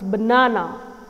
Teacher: I'm stressing on the second syllable